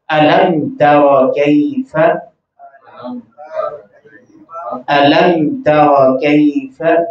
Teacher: میم ساکن کو ظاہر کر کے بغیر غنہ کیے اگلا لفظ پڑھا جاتا ہے۔ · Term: اظہار شفوی